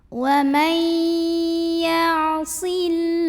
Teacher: alif lam tidak dibaca, melainkan langsung lewat masuk ke lam berikutnya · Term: idgham syamsi